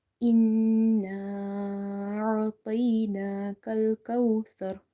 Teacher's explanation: Ta is heavy, ra is heavy, tha is from the tip of the tongue.